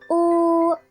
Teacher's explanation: Dan yang terakhir pada kolom belakang bunyi bundar baris tinggi terdapat bunyi U